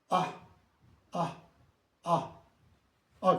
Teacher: یہ حمزہ جو ہے یہ بھی حلق سے نکالنا پڑتا ہے. ہلکا لفظ بھی ہے اور حلقی بھی ہے.